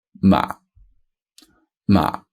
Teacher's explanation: goes down croak and then it just dies off doesn't do anything else it's quite short and it's at the lowest point of your vocal range · it's quite short and it's at the lowest point of your vocal range m not right trying to push it down just m that's · I would say it goes even slightly above first tone, but definitely at the limit of your vocal range, and then straight down, ma. And we call this the assertive tone, because for me, it sounds like you're telling a dog off or saying no to a dog. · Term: zombie tone, fourth tone